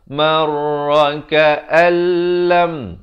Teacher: Tapi datang lam, hukumnya idgham bila gunnah. Masuk tanpa dengung. Jadi ka'al.